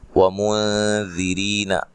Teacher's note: واو کو ادا کرتے ہوئے ہونٹوں کو گول کرنا ہے، نون ساکن کا اخفا مع الغنہ ہے، باریک اخفا ہے، را کو باریک پڑھنا ہے، ری یا مدہ ہے، دال کو نرم ادا کرنا ہے۔